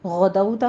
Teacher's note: गदौता में गैन को आपने अदना हलक से पढ़ना है, पुर पढ़ना है इसको।